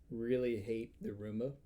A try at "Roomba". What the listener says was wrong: You said Roombo the first time. You said Roombo the first time.